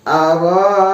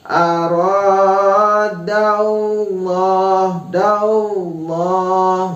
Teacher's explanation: ada lam jalalah ya, yaitu tafkhim. Jadi harus dibaca tebal.